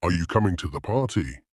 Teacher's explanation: the voice will typically rise at the end, showing it's a yes or no question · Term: Rising and falling. Intonation